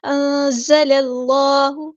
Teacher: انزل کا جو لام ہے نا اس کو باریک پڑھنا ہے، صرف اللہ کا جو لام ہے وہ ہیوی ہوگا، موٹا ادا ہوگا